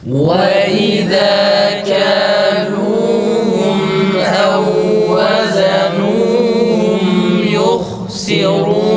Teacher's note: kafta ses normal, lamda sesi yükseltiyoruz.